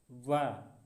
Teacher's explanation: व का उच्चारण दंतोष्ठ। व तो हम दांत और ओष्ठ से बोलते हैं।